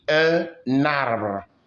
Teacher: We call it liaison. You use the N to form a syllable with the next A.